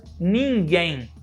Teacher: quando a gente tem a letra m ou a letra n a gente pronuncia da mesma forma que é uma vogal nasalizada